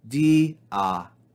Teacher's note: Notice again the grave accent telling us to fall on the second syllable